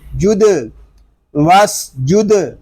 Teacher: دال ساکن ہے، اس میں خوب کلکلا ظاہر ہوگا۔ وس جد، واو قاف زبر وق، یہاں الف زائد ہے، قاف کو پر پڑھیں گے، قاف ساکن ہے، اس میں کلکلا بھی ظاہر کریں گے۔ · سین حروف صفیریہ میں سے ہے، اس میں سیٹی کی آواز آئے گی، دال ساکن ہے، اس میں خوب کلکلا ظاہر ہوگا۔